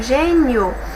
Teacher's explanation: a penúltima é mais forte ela terminada em ditongo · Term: a penúltima é a mais forte